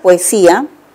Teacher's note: suena lo que sí notamos es en la palabra poesía un hiato simple porque hay vocales abiertas que se deben separar